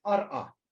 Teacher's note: in Mandaic, the scribes write arqa, but they pronounce it ar'a.